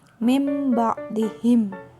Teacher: bunyi nun mati atau tanwinnya itu berubah menjadi bunyi mim. Huruf iqlab hanya satu, yaitu huruf ba saja.